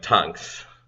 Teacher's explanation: very much like in many other areas of the Caribbean the th becomes a T sound